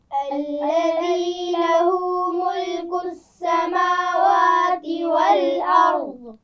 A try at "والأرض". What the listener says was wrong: قلقلہ نہیں کریں گے ضاد پر. والارض.